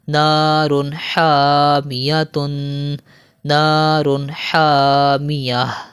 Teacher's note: تنوین کے بعد حرف حلقی میں سے ہا آ رہا ہے تو یہاں پر بھی ہم غنہ نہیں کریں گے